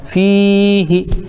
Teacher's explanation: فی کو کھینچیں گے کیوں؟ اس لیے کہ یہاں پہ یا مدہ ہے